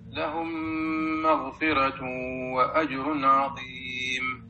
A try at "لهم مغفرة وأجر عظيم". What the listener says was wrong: لا لا عندنا مشكلة في المغفرة. لا لا ورقق ورش كل راء سكنت قبلها الكسرة أو الياء مسجدة. لا احنا بنفاخم هنا. مغفرة راء راء راء.